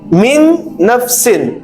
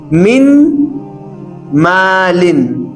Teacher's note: میم کو نون کے ساتھ مکمل طریقے سے ملا کر دو حرکات کا غنہ کرنا ضروری ہے